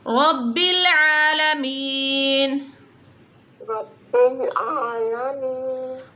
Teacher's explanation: Standing Zabar is on the Ain, so little bit stretch it.